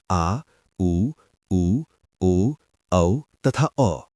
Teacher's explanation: पश्च स्वर जीभ का पिछला भाग सामान्य स्थिति से उठता है।